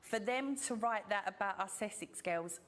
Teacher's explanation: using that vocalised dark L on girls, and also that glottal T on about